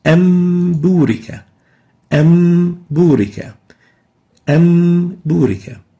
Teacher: We're going to exchange the noon with a meme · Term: iqlab